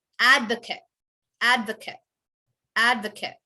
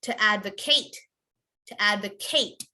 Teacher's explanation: advocate could be could we all repeat that advocate correct advocate you would end on the t you would not say it as eight you want to end on the t advocate but if it's